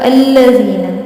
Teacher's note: ये अल्लाह वाला लाम नहीं है, ये सिंपल लाम है, तो ये सारे लाम बारीक पढ़े जाते हैं